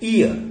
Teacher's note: ई बोलने के बाद अ के लिए हमें रुकना नहीं पड़ता है. ईयर जैसे हियर, ईयर. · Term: डिप्थोंग